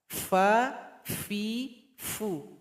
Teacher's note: bibir di bawah bergabung dengan gigi seri paling atas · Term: huruf Fa